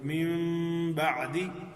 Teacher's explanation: من بعدی، تو اس کو میم بعدی بھی پڑھا جا سکتا ہے لیکن با پر بہت سختی سے جو ہے وہ ہونٹ بند نہیں ہوں گے. من بعدی ذرا تھوڑا سا نرمی کے ساتھ اس کو ادا کریں گے. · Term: اقلاب